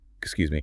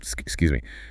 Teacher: The upward inflection softens the interaction into an invitation. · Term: rising tone